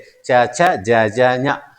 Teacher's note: దంతాలకు వెనుకున్నటువంటి భాగంలో నాలుక తగులుతుంది. దాని సహాయంతో పలుకుతాం కాబట్టి దాన్ని తాళవ్యము అంటారు, తాళవ్యాలు అంటారు.